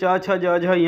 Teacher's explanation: जहाँ से च, छ, ज, झ, य निकल रहे हैं वही तालु है। तो च, छ, ज, झ, य च वर्ग का तालु स्थान होता है।